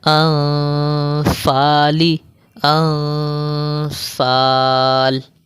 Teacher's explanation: میں جب غنہ کر رہا ہوں تو فا کی طرح بھی آواز نکال رہا ہوں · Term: اخفا مال غنہ